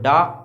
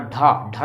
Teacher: आप डा और ढा बोलते हैं अपन, तो डा अल्पप्राण हो जाए, ढा ढा देखिए ज़्यादा लगता है इसमें वायु।